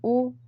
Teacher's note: ओठ का की प्रोसेस भी हो रही है। ओ ओठ गोल बन रहा है और गले से भी कंठ से भी आवाज निकल रही है। तो यह कंठ ओष्ठ है।